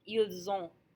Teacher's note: We don't hear the T because it's all pronounced as one sound.